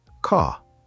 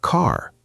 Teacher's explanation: The R is very soft, almost quiet. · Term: soft R